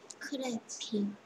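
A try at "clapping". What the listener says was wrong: 또 R 소리처럼 됩니다. 네가 소리 내는 건 이거 소리예요. 이거 소리. 이게 클래핑이겠죠. 클래핑. 클래핑. 클래핑. 클래핑. 클래핑. 클래핑.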